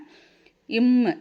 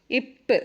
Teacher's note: இப் சொல்லி பாருங்க ரெண்டு உதடு சேரும்